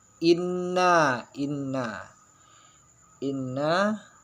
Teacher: itu ghunah ya nun bertasydid